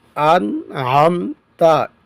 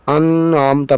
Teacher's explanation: یہاں پر غنہ نہیں ہوگا بلکہ اظہار ہوگا کیونکہ نون ساکن کے بعد حروف حلقی میں سے عین آیا ہے تو ظاہر کر کے